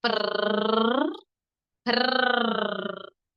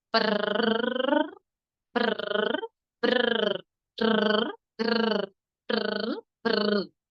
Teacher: তার একে আমরা কম্পন হবে দেখবেন জিভে।